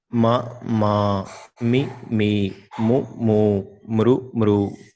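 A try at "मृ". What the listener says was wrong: Not mru. It is not mru. It is mr. Mrityunjaya. No, again, you are saying it is mru. It is not. There is no mru. You can watch your lips.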